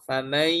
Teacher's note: itu kan masih ada sengau tuh. Jadi tidak hilang 100% suara nun sama mimnya apa suara nun tanwinnya begitu ya. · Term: idgham naqis